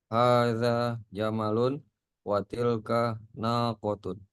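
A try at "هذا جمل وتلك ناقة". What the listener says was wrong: Mumtaz, Masya Allah.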